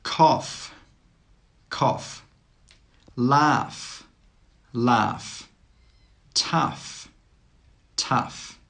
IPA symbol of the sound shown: f